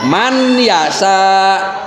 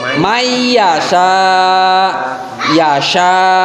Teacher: Mayyasha itu harus diidghamkan. Jadi si suara nunnya itu hilang, masuk ke huruf iya. Jadi jangan sampai di sini kita membaca man yasa, tapi mayyasha, yasha.